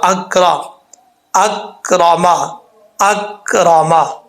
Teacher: کاف کو پڑھتے وقت قلقلہ نہیں کرنا، کاف ساکن ہے لیکن یہ آواز جو ہے نا وہاں جم جائے گی، قلقلہ نہیں ہوگا، یہ حروف قلقلہ میں سے نہیں ہے، اس چیز کا آپ نے خاص خیال رکھنا ہے۔